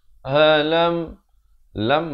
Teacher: Dzalika bi annallaha lam. Halam, lam masuk saja sempurna, jangan panjang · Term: izhar syafawi